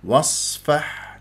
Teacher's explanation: والحاء رقيقه لطيفه ساكنه واقف عليها بهدوء